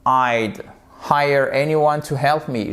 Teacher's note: Ce qu'il faut que vous compreniez bien ici, c'est que le apostrophe D, c'est la contraction de would. Et on ne prononce pas le D.